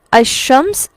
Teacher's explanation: یہ حمزہ جو ہے شین کے ساتھ مل گیا اور لام بالکل ایسے ہی ہے جیسے وہ موجود ہی نہیں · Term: ادغام